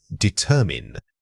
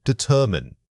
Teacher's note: Notice how the er sound is often reduced when spoken quickly